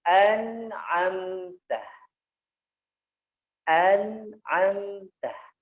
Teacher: Disentuhkan dengan lembut ke gusi, an, ditaruh di hidung sedikit. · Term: nun